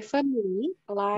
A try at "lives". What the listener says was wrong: Lives. Pakai lives. Pakai v. Lives.